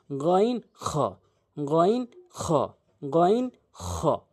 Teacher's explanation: দুটি হলকের শেষ থেকে উচ্চারণ হয়